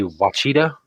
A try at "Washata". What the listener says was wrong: But it's actually Washata. Washata. It's an SH. It's a W, SH, and then ta. So Washata.